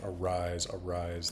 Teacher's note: on non first syllables because of course in English arise arise the emphasis is on the second syllable